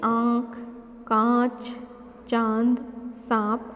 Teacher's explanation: इसका उच्चारण करते समय हवा नाक और मुंह दोनों से समान दबाव के साथ बाहर निकलती है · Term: अनुनासिक